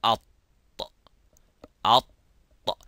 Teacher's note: So have a look, the use of the tip as well as the middle part goes to the roof of the mouth, and say at, at. The sound stops there, but there is no air coming out.